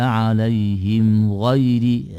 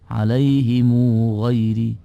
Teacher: mimnya itu dibaca dengan harokat, ya, harokat dhamma, kemudian dipanjangkan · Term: silatul mimil jam'i